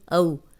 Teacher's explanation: جزم والی واو پیچھے زبر ہے، یہ واو لین ہے، اس کو لمبا نہیں کرنا